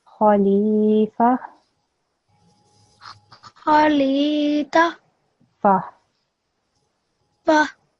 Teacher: So this ta sound becomes a ha sound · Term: ta marbuta